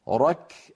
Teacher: الكاف قصيرة لأنها حرف شديد